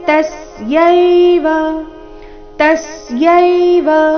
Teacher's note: ತ ಮೇಲೆ ಆಘಾತ ಚರಣದ ಕೊನೆಗೆ ಬಂದಿರುವ ವ ರಸ್ವ ಬರಬೇಕು